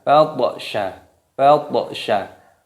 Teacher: Di sini berharokat sukun, ini diqalqalah, dipantulkan.